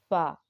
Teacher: شفوی مخارج: فا اوپر کے دانتوں کے کنارے اور نچلے ہونٹ کے تر حصے سے ادا ہوتا ہے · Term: حروف شفویہ